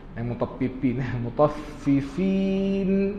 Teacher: nun yang kita matikan di situ kena dengung pendek